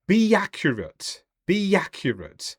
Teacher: we have the Y between be and accurate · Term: intrusive sounds